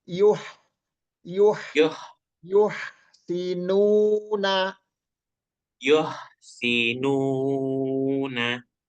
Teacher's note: enggak ada suara ngoroknya tapi angin aja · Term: ha